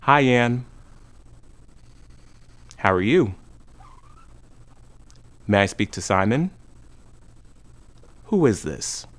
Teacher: We say both vowel sounds, but we use a short Y or W sound to connect them without a break. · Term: linking sound